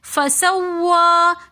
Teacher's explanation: سین کو ہم نے پراپر سیٹی کے ساتھ ادا کرنا ہے